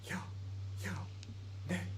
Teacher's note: We normally speak while we exhale, but these words may be said with an inhalation. · Note that many Icelandic speakers, especially women, although men too, may pronounce the words for yes, yao, and no, nay, with an inhalation, right? We normally speak while we exhale. These words may be said with an inhalation.